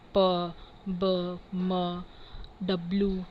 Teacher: The sound which are formed using both upper and lower lip